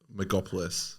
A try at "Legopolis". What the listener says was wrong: You mean Legopolis? No M. Stop putting an M there. Legopolis.